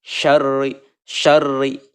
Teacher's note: Roh yang berharokat kasroh ini dibacanya harus tipis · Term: hukum rok